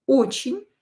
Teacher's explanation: Again, E is not stressed. Pronounce it as I.